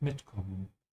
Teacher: whenever you have a separable verb like mitkommen, always emphasize the prefix mit